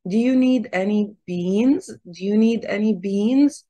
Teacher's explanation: the stress is here is on beans